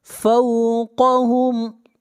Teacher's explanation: قاف کو موٹا پڑھیں گے، قاف حروف مستعلیہ میں سے ہے۔